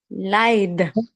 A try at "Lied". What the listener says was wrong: the E and the I, which one come before the other?